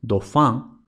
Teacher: una L implosiva, es decir, una L al final de la sílaba, en francés casi siempre se convierte en U